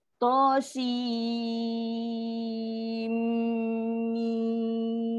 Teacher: Si tu panjang sebab dia mat. Dia lah kena buat 6 harakat dulu. Nak masuk ke mim tu dengung. Dengung yang panjang, dengung yang lama.